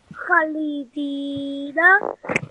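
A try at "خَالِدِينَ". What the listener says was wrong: Can you try to read once more, please? Because it has two letters of madda. So we are ha 2 second, li 1, and then di 2 second, and then na 1 second. So it will be Khalidina.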